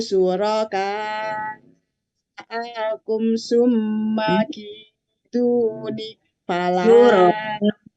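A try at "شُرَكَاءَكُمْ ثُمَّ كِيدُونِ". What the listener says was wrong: Akum, nah Bunda jangan ke bawah irama ya. Syuroka akum dari kulid'u, ulang lagi. Iramanya yang harus dirubah itu Bunda.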